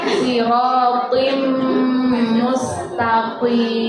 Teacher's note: Jadi bukan sirotim, tidak. Kalau tim biasa berarti hurufnya ta, tapi di sini to. Jadi tebal.